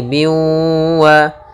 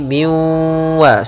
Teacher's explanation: Ya, di sini ada idgham bi gunnah, yaitu kasratain bertemu dengan huruf waw. Maka cara membacanya masukkan kepada huruf waw, ya, maka menjadi biwa sambil ditahan gunnahnya.